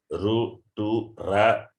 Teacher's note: The tongue has to be in contact, the tongue has to touch the Murdha, the upper part of the vocal organ.